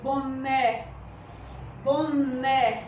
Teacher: então a sílaba né é que é a sílaba tônica da palavra boné é fácil porque porque ela recebe o acento gráfico acento agudo